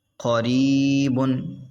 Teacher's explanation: قا، را یا زیر ری، قریب، با دو پیش بن، قریبن، را باریک ہوگا کیونکہ را پہ زیر ہے